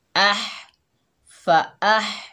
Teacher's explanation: हमज़ा के ऊपर ज़बर, आगे हा साकिन आ रहा है, ये हा जो है हलक से अदा होगा